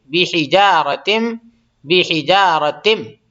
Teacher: بحجارتم، تا کو میم میں ملا دیں گے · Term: ادغام